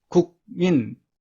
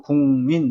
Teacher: 국민, 민이 비음이기 때문에 국이 궁으로 바뀝니다. 그래서 국민 이렇게 됩니다. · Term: 비음화